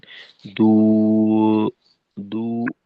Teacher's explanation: উ এর মতো ছিল, যেটা কিনা শেষের দিকে গিয়ে একটু ও এর দিকে চলে যায়। তো এটাকে, এই গোলটাকে একেবারে পূর্ণ সময় একরকম রাখা, আমাদের আওয়াজের প্রকাশটাও তাহলে সুন্দর হবে।